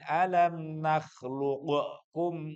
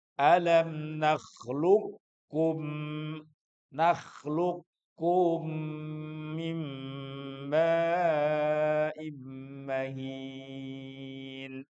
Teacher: Qof dan kaf. Qof-nya hilang masuk ke kaf. Enggak boleh diqalqahin. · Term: idgham mutaqorbain